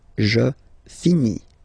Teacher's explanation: Remember, final S is not pronounced.